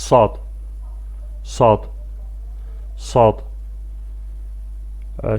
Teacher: Belə ki, bu hərf dilin ucu aşağı kəsici dişlərin və ya aşağı ön dişlərin ortasına dəyərək tələffüz edilir. Azərbaycan dilində olan sı səsinin qalın və kobud formasıdır. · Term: sad hərfi